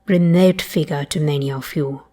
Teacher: Notice that goat vowel one more time, and you, no goose fronting there at all.